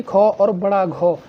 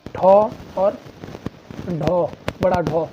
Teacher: महाप्राण यानी कि जिनमें मुख से अधिक हवा निकले